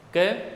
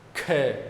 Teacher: पहला अल्प प्राण होता है और दूसरा महाप्राण होता है कम और ज्यादा वायु की बात आई है तो देखो बोलने